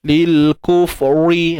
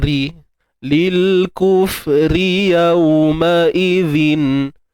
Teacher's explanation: ra baris depan, ra baris bawah, nipis sahaja.